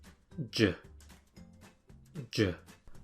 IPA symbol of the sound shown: dʒ